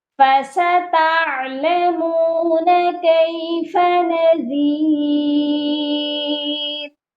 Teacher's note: یہاں پر عین کی آواز کلیئر ہونی چاہیے، تعلمون حمزہ کی آواز نہیں آنی چاہیے.